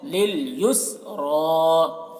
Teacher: یہ سین میں بھی قلقلہ نہ ہونے پائے، یسرا ایسے نہیں پڑھنا ہے، یسرا، سین میں آواز کو روک لینا ہے اور را کو پور پڑھیں گے